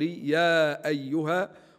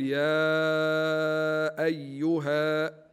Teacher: يقرا في المد المنفصل بالقصر يا ايها ويقرا ايضا بالتوسط يعني اربع حركات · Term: مد منفصل